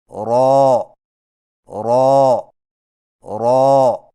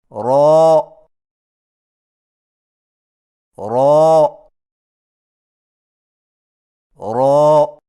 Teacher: را کی ادائیگی میں زبان کی نوک کی پشت کو اوپر والے دانتوں کے مسوڑوں سے لگا کر موٹی آواز میں پڑھیں، یعنی را را را۔